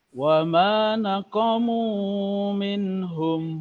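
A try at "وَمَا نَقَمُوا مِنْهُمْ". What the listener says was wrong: Mu-nya terlalu panjang. 2 harokat.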